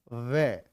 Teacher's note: दांत और होठ का मिलन हो रहा है तो दंतोष्ठ, दंत औष्ठ। दांत और होठ का मिलन हो रहा है इसलिए दंतोष्ठ है।